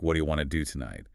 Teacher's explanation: You start noticing how the t sound at the end of want blends with the t sound at the beginning of to, effectively becoming one sound in wanna